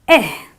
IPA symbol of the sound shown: I